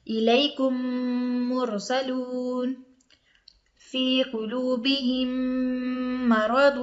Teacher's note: میم ساکن کے بعد میم آ جائے تو وہاں ادغام ہوگا، یعنی ملا کر پڑھیں گے، ایک میم کو دوسرے میم سے ملا کے پڑھیں گے، جس طرح یہ مثال ہے الیکم مرسلون، ٹھیک ہے۔ میم ساکن کے بعد میم آ گیا ہے، وہاں غنہ بھی کریں گے، ناک میں آواز بھی لے جائیں گے اور میم کو میم سے ملا دیں گے، یعنی ایک ہی میم ہو جائے گا وہ، الیکم مرسلون فی قلوبہم مرض، ٹھیک ہے۔